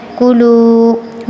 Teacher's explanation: واو کے پیچھے پیش آیا حرف مدہ، اس کو کھینچ کر پڑھیں گے